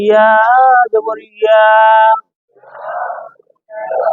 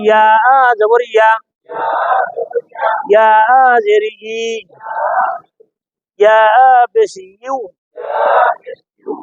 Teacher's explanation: এই ইয়াটা জিহ্বার মাঝখান থেকে নরম।